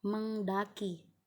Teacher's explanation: karena Eng itu velar kemudian daki itu huruf d-nya itu merupakan bagian alveolar jadi berbeda jauh letaknya